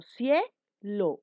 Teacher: Yo digo cielo, una sola explosión de voz que representa al diptongo.